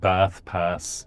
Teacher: there are many accents where you got a long vowel there that's not back · There are many accents where you get a long vowel there that's not back, so you get bath, pass, and that's true in Ireland, and it's also true in England, in the south of England, in the southwest.